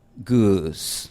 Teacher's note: Esta u inglesa tiene también, igual que la i inglesa, tiene como un glide, al final tiene como una semivocal. En algunas palabras es más obvio y en algunos acentos es más obvio.